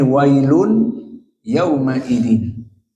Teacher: wailun tanwin bertemu dengan ya, maka idgham bi gunnah dari qiraah jumhur